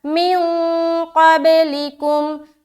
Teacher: من میں پھر اخفا کرے کیونکہ نون ساکن کے بعد حرف قاف ہے